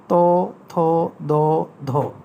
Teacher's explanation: জিভের ডগায় গিয়ে দাঁতে লাগে, এখানে 4টি ধ্বনিকে দন্তধ্বনি বলা হয়।